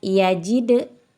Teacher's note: ada qolqala sugro dipantulkannya kecil saja ya ada huruf qolqalnya yaitu huruf Dal dengan sukun asli e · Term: qalqalah sugro